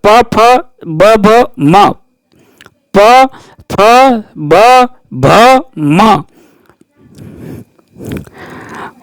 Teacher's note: प वर्ग का उच्चारण स्थान है ओष्ठ।